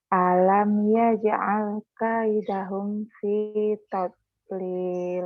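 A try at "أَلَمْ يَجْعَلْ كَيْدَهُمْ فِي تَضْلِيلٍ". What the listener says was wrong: Nah, beda kan sama sama taut. Beda. Ya, oke.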